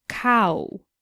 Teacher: when saying the word cow slowly you can hear how the a sound slides into the oo sound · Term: diphthongs